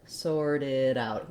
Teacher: And the stress in the phrase falls on out. So sorted are both pretty fast, and then out is a little bit longer.